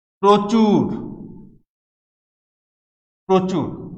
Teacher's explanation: যেমন আমরা লিখি প্রচুর, প্রচুর, পরবর্তী উ ধ্বনি আছে, এর আগের অ ধ্বনির সাথে রফলা যুক্ত আছে, এই কারণে এটির উচ্চারণ ও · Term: সংবৃত উচ্চারণ